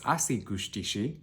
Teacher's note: you can hear that rise in pitch at the end